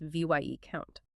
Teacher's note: It drops the s entirely in speech